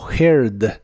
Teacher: la H se pronuncia como una J suave de español y la a no se pronuncia Así que suena como herd